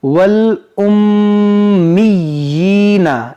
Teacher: دیکھیں یہ میم مشدد ہے، اس میں غنہ کریں گے، یہاں پر کھڑی زیر ہے جو کھینچیں گے۔